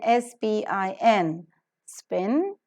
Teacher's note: the three term label for the production of per sound is voiceless because the vocal cords do not vibrate bilabial because the place of articulation is two lips and plus because the manner of articulation is a compression of